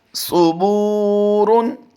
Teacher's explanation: صاد کے اوپر جو پیش ہے اس سے آگے واو ساکن نہیں ہے، اس لیے صاد کو لمبا نہیں کریں گے۔ اور تنوین کلمے کے آخر میں آتی ہے، اسے بھی بغیر لمبا کیے ہم پڑھتے ہیں۔